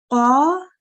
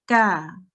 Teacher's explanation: This is a really thick and heavy sound, and it's quite tight at the back of my throat.